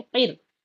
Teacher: काफ रा जेर किर, काफ के नीचे जेर है, जल्दी पढ़ेंगे, नीचे जाती है जेर की आवाज